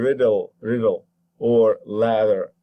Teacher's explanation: away and that is gonna make that into a voiced voiced alveolar sound that you know as the tap